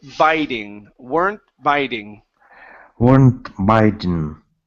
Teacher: with this T, we still need to pronounce it. So, we're not going to pronounce a swallowed T